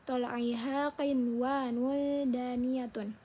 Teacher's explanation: nun mati dan wau ini dibacanya tidak didengungkan dan jelas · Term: izhar mutlak